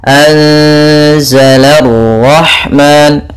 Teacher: la tipis, ro-nya tebal. Anzala rahman, la baru langsung qara, la rahman. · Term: ra tafkhim